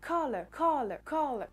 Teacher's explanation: si je le prononce avec l'accent britannique et la prononciation britannique l'accentuation se fera sur la première syllabe